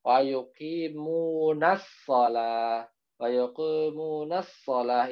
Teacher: ada alif lam tapi alif lamnya seolah-olah tidak ada, langsung masuk ke huruf shad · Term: alif lam syamsiah